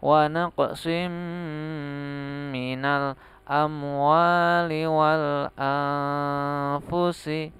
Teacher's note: nun sukun bertemu dengan fa, bacaan ikhfa, dibaca samar-samar.